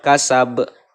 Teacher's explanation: jadian cara membacanya adalah benar-benar jelas besar dan tebal ya dibacanya dibaca mantul-mantul akhirnya dipantulkan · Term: qolqolah kubro, qalqalah kubro